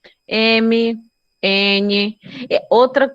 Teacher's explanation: Nasal é porque sai mais pela via nasal do que pelo oral, ou vocal.